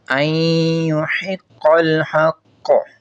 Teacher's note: دوسری مثال میں نون ساکن کے بعد یا ہے تو نون کا یا میں ادغام کریں گے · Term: ادغام مع غنہ